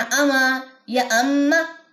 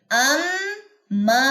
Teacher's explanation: अब इसको ऐसे नहीं पढ़ना अमा या अम्मा, दोनों तरीके गलत है। अम्मा, मद भी अदा होगी और मीम मुशद्दद का गुन्ना भी अदा होगा